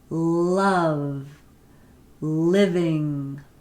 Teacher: on that alveolar Ridge behind your teeth so this would be tongue tip behind your teeth and allowing the air to escape along the sides of your tongue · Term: alveolar liquid